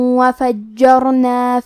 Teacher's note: کلمت فجرنا میں جیم پہ تشدید ہے تو ہمیں دو حرف کے برابر جیم کو پڑھنا ہے